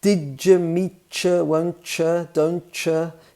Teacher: it's more a schwa sound than a proper you